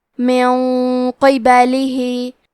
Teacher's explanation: تو ہم یہ حکم کو غنہ کے ساتھ ادا کریں گے اور غنہ کو تفخیم سے ادا کریں گے کیونکہ حرف القاف حروف التفخیم میں سے ہے۔